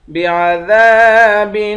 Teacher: دال کے بعد الف ہے، الف حروف مدہ ہے، ایک الف کی مقدار کھینچ کر پڑھیں گے